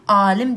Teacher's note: Alim deyəndə artıq saitini uzadan zaman sözün mənası tam oturur.